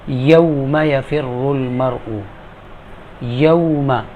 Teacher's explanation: اب یہ یا جو ہے زبان کے درمیان جب اوپر کے تالو سے لگے گا تو اس سے ادا ہوگا